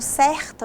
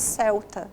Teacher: Olha só, o Cebolinha, que é esse personagem, ele é bastante conhecido, principalmente pela maneira de falar, ele tem dificuldade em pronunciar a letra R. Então, em palavras como certa, por exemplo, ele troca o R por L e ele diz celta